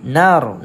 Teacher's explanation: Nar kat sini ra dibaca dengan tebal kerana sebelum ra terdapat baris atas. So kita sebut dia sebagai ra tafkhim.